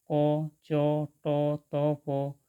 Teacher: এই বর্ণগুলি উচ্চারণের সময় শ্বাসবায়ু বেশি জোরে বাহির হয় না, তাই এগুলিকে বলা হয় অল্প প্রাণ বর্ণ